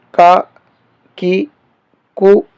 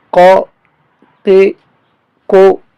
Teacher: اس کاف کو باریک پڑھیں گے، کا کی کو، اور اس قوف کو موٹا کر کے پڑھیں گے